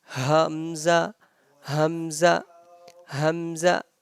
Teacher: the sound of hamza comes out from the bottom too from bottom of our throat